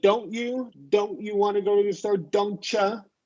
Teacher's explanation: If it's T followed by Y word, then it's going to be ch.